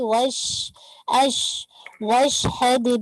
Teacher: शीन पे आवाज तफशी की सिफत है, आवाज फैलेगी